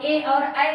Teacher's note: ए और ऐ का उच्चारण स्थान हो जाएगा कंठतालु से